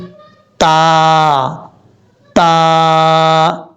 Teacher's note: زبان کی نوک اوپر والے دانتوں کی جڑوں سے لگے تو تا پڑھا جاتا ہے دو نقطوں والا، اور یہ بریک پڑھا جائے گا، اس کو کبھی بھی آپ نے پر نہیں پڑھنا، موٹا نہیں پڑھنا۔